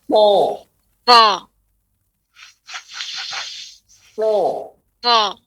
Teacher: Nah, ada aliran seperti ban kempes seperti itu ya, yang misalnya pada so, pangkal lidah dinaikkan, suara menghujam lurus ke atas.